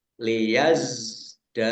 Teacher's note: Za sukun bukan qalqala ya jangan dipantulkan liyazdadu jangan dibaca liyazdadu ya ini Za sukun bukan Qalqalah Dal